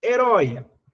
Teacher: A palavra herói eu acentuo por quê? Porque é uma oxítona, ou seja, a sílaba mais forte é a última.